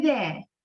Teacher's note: you are pronouncing all the R's in English we don't do that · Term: the r sound